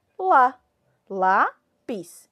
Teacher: a minha sílaba mais forte quem fala é a sílaba lá